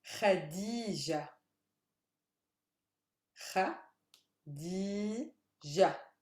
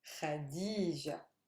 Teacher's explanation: So the stress is on the D, the middle syllable, which is heavy.